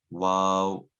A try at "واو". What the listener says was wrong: Wow. It's more circular. So start off with the circular lips and then let the sounds come.